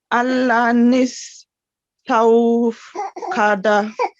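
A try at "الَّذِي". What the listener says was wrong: Allazis. sorry, it's not noon, it's a zal.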